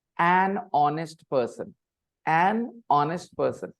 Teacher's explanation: Basically, an is not pronounced separately. Na sound goes with the noun that comes after.